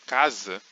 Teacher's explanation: apesar de se inscrever um s a gente pronuncia um z